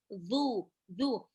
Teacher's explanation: Dhammah ketemu sama waw sukun. Zu, zal, ujung lidah bertemu dengan 2 gigi sebelah atas. Zu, zu, bukan zu ya, tapi zu, zu.